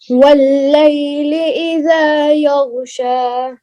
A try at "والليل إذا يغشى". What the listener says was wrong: वल्लैल, अच्छा ये या ग नहीं करना, गैन में कलकला नहीं होता है। वल्लैल इज़ा यग़शा, या ग नहीं है। वल्लैल इज़ा यग़शा